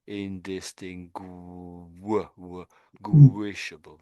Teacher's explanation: there's no W there, but we're sort of making it a W.